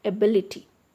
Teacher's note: the stress is on the third syllable from the end